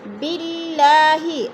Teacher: اللہ کو باریک کر کے پڑھیں گے، اس لیے کہ اللہ سے پہلے لفظ جو با ہے اس کے نیچے زیر ہے تو اللہ باریک پڑھا جائے گا۔